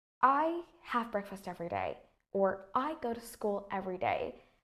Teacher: you see my tone of voice Falls decreases towards the end of the sentence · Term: falling intonation